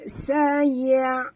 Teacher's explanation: jangan baca ya tebal, ya tu huruf istifal. Jadi kita baca ringan saja ya. Saya, bukan saya, bukan yo, tapi ya.